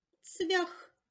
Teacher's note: в кінці запишемо глухий приголосний х